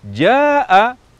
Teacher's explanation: Jaa seharusnya diucapkan dengan panjang Mad yang lebih dari dua harakat